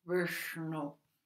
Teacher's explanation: É, se fala assim, Vishnu, que esse S daqui é o sh, que é enrolado, retroflexo, e o n também